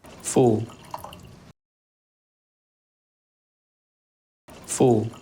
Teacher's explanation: 입 모양이 약간 쪼그라 이렇게 모여지잖아요. 그런데 처음부터 이게 아니라 약간 벌어졌다가 의에서 우로 가는 느낌이에요.